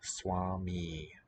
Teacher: Compensatory lengthening, another theme for the evening. Swami, both vowels long in the nominative singular